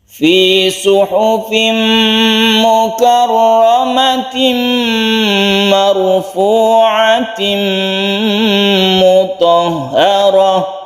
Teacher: Kalau kita teruskan maka bukan makarramah tapi langsung kita tasydidkan ke mim karena ini tanwin bertemu dengan mim idgham bigunnah.